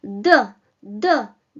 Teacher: So you simply press your tip of the tongue against your upper teeth. Not against the alveoles, but against the upper teeth.